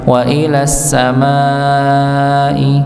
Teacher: Wa ilas samai kaifa, dipanjangkan 4 harakat. Ya, jangan 2 harakat tapi 4 harakat. Maka ketika kita membacanya wa ilas samai kaifa misalnya, wa ilas samai kaifa, maka itu kurang dari 4 harakat, cuma 2, maka lebih dipanjangkan lagi.